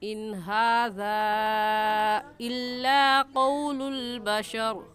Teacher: نون ساکن کے بعد حروف حلقی میں سے ہا آگے، اس لیے اس نون ساکن پر غنہ نہیں کریں گے بلکہ جلدی سے پڑھ جائیں گے. اور ہاذا میں مد منفصل ہے کیونکہ حروف مدہ کے بعد حمزہ اگلے کلمے میں ہے.